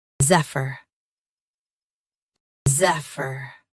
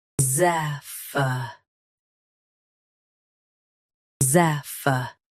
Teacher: US drops uh UK keeps uh watch the ending. Practice repeatedly and you'll soon be able to say this word perfectly.